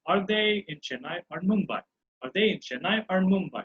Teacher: Okay, I'm going for rising tone here.